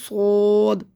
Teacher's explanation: صاد کو سیٹی سے موٹا پڑھیں گے، صاد، منہ بھر کے